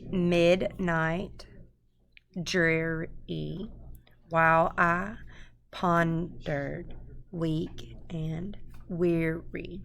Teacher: And it goes a stressed syllable followed by an unstressed syllable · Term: trochaic octameter